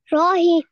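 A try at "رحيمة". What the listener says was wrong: Okay, you need to correct the middle sound. Rahima. Rahima.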